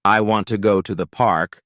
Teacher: the main stress will likely Fall on want go and park the other words help the meaning but are not as loud or heavy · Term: sentence stress